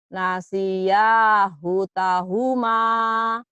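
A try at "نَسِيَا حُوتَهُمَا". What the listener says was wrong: Udah bagus, tinggal dihunya panjang.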